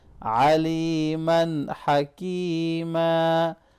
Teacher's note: وقف کی حالت میں الف مدہ ہوگا، تھوڑا سا کھینچ کے پڑھیں گے